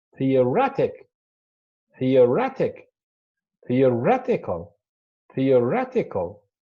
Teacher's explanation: Now, when we added the suffixes ik and equal, so the stress, changed its position and fell on the penultimate, the one before the last